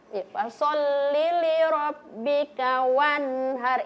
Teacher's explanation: Jadi ee ketika nun sukun dan tanwin bertemu dengan enam huruf ini, maka cara membacanya dibaca jelas. Tidak boleh kasih pantul, tidak boleh kasih dengung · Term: izhar halq